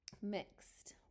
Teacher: That's because the X has a voice off. And so the sound that you're going to make for ed is the voice off sound, which is that T.